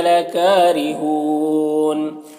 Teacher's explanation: را کے نیچے زیر ہے، را کو باریک پڑھیں گے، اور ہون میں واو مدہ ہے، وقف کریں گے تو مد عارض وقفی ہوگا